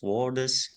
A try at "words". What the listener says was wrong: In word is, so not word is, but words. That d and z is linked together. Words, not word is.